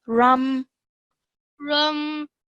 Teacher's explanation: meme is not a letter of qalqala. So when you join the ra to the meme, do so nice and gently